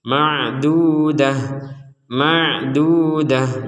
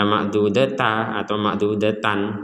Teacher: huruf ta yang bentuknya bulat seperti ini maka kita membacanya sebagai huruf ha ketika kita berhenti ma'dudah ma'dudah jadi jangan dibaca ma'dud Ta atau ma'dudatan nah tidak